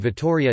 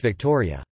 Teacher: the double t in the name Vittoria takes just as long to say as the ct does in English Victoria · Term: geminate stops